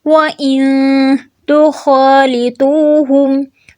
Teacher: نون ساکن کے بعد تا ہے تو یہاں پہ ہم اخفا حقیقی کریں گے